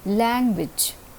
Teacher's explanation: is receiving the prominence or the stress or the accent language the first initial syllable is receiving the stress in this word